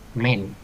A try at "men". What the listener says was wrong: Âm này là mây đấy. Cái âm cuối cùng là có chữ N.